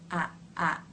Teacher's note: raises a bit exposing some of those front teeth a a the tip of the tongue remains forward in the sound lightly touching behind the bottom front teeth the second sound of the diff thong is the e as